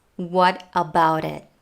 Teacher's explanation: When we connect what to about, this T at the end of what becomes a flap T